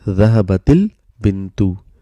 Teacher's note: Sukoons turned into kasra, so that it's easy to pronounce. So we say dhahabatil bintu. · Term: iltikai sakinaini